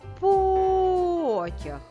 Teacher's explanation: який склад ми вимовляли довше та з більшою силою правильно склад по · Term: наголошеним